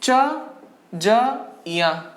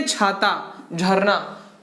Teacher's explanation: जहां पर आपके अंदर से जो प्राण वायु है वो अधिक निकले, ज्यादा निकले, उसे हम लोग क्या कहते हैं? महाप्राण।